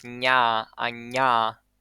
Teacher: made by moving the center of your tongue close to the hard palate and lowering the velums of the part of the ear goes through nose. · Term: palatal nasal